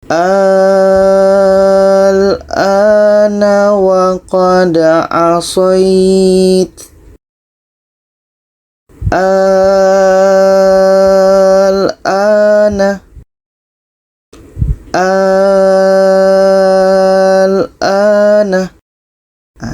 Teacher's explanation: ini tanda Mad bertemu dengan huruf yang mati jadi cara bacanya kita panjangkan dulu 6 harkat baru kita masuk kepada huruf yang mati kita panjangkan 6 harakat ini dan baru kita masuk kepada lam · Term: mad lazim kilmi mukhaffaf